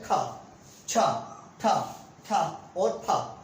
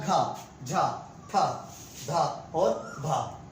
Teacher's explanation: तो मुंह से कैसे निकली, वायु बहुत अधिक निकली, तो इसलिए क्या नाम दे दिया गया इसको, महाप्राण।